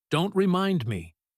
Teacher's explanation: With a little punch on don't · The word don't here often gets quick, sharp stress, almost a small protest, before the rest of the sentence settles into a softer, amused tone.